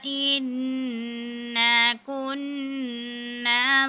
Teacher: دونوں جگہ پہ نون مشدد ہے تو نون مشدد پہ ہم نے غنہ کیا ہے